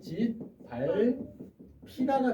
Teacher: 비읍과 히읗이 만나서 거센 소리가 된 거죠. 음운의 개수가 하나 줄었네요.